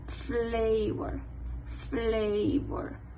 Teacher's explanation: los dientes de la superiores se unen con el labio inferior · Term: labiodentales